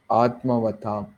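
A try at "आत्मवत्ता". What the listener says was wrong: ஆத்மவத்தாவா வதாம? வத்தா, ஆத்மவத்தா. ஆத்மவத்தா ஒரு இத்து வேணா கூட போட்டுக்குங்க. ஒரு இத்து கூட போட்டுக்கணும். ஆத்மவத்தா.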